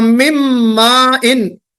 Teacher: ادغام کامل ہو رہا ہے لیکن غنہ بھی ہو رہا ہے